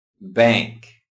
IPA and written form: bæŋk (bank)